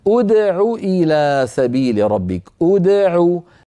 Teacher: فضم همزه الوصل عند البدء بها